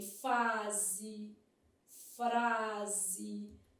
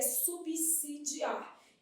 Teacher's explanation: como o S não é intervocálico, ele não tem som de Z